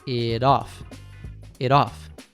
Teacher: The T in it is between two vowels. So, we convert it to a tap T and connect it to off. it off it off And then, all three words flow together as if they were just one.